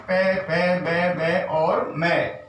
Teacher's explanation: इसके बाद में उ पे वर्ग में ये पांचों आ गए, पे पे बे बे और मैं, तो ये ओष्ठ वर्ण कहलाते हैं। क्योंकि इन वर्णों का जब उच्चारण करते हैं तो दोनों ओठों का स्पर्श होता है